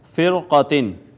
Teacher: را ساکن ہے، ما قبل کسرہ اصلی اسی کلمہ میں ہے لیکن ما بعد حرف مستعلیہ قاف آ گیا۔ اس صورت میں بھی را کو ہم پر کر کے پڑھیں گے